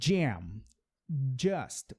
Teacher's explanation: a letra J é como se você falasse isso aqui, ó. Jam. É como se tivesse um D aqui na frente.